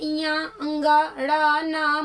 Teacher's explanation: आगे देखिए एमं गणना नाम नासिका च, कहते हैं जो पंचमाक्षर है इया अंगा ड़ न म, ये पांचवें अक्षर जो सब वर्गों के हैं वो अपने उच्चारण के साथ साथ नासिका से भी बोले जाते हैं